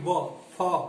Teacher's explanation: जिन ध्वनियों के उच्चारण में दांत और होठ दोनों आपस में टच करते हैं, दोनों आपस में मिलते हैं, उनको हम दंतोष्ठ कहते हैं।